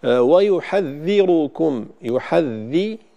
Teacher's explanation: ضم الراء مفخمة مع بيان كسر الذال، طبعا هذا عند غير ورش، فينبغي بيان الكسر وتفخيم الراء جيدا.